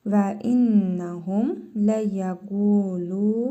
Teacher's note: Qaf hərfində və ləm hərfində hər ikisində hərfi məd var. 1 əlif miqdarı uzadırıq.